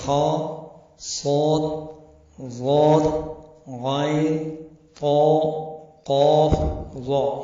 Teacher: ان حرفوں کے ادا کرتے وقت زبان کی جڑ کے اکثر حصے کا تالو کی طرف اٹھ جانا ہے، جس کی وجہ سے یہ حروف موٹے ہو جاتے ہیں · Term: استعلا